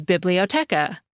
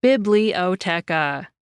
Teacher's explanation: The same word in Spanish is biblioteca. Each syllable in that word gets about the same emphasis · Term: syllable-timed languages